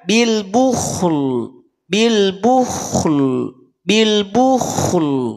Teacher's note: Awas ko tebal tapi lam setelah ko itu tipis maka setelah selesai membunyikan huruf ko Balikin rahangnya ke rahang